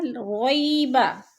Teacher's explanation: ری کو لمبا بھی نہیں کرنا اور جھٹکا بھی نہیں دینا، کیونکہ اس کے اوپر یالین ہے، یا ساکن سے پہلے رو کے اوپر زبر ہے تو یالین۔